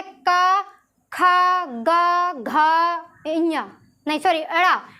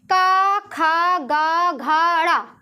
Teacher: कहाँ से आवाज़ निकल रही है, अपने गले से